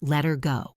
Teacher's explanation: If you are listening for the sharp h sound, you won't hear it. You need to listen for the change in the vowel sound. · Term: drop the H